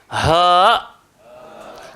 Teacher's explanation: Ha keluar dekat mana? Ha keluar dekat tekak bahagian paling bawah.